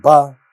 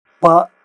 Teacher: both are not aspirated, but ba is voiced and pa is not voiced.